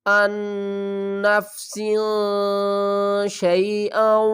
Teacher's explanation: تنوین کے بعد حروف اخفا میں سے شین آ رہا ہے، یہاں پر کیا کریں گے؟ نون کی آواز کو چھپا کر پڑھیں گے۔